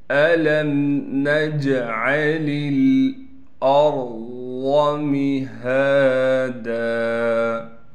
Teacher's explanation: نون کے بعد جیم ہے، جیم حروف قلقلہ میں سے ہے اور جیم ساکن ہے، لہٰذا جیم پر قلقلہ کیا جائے گا۔ أَلَمْ نَجْعَلِ الْأَرْضَ مِهَادًا حمزہ کو را سے ملائیں گے، را کو موٹا کر کے پڑھیں گے، ضاد بھی موٹا پڑھا جائے گا۔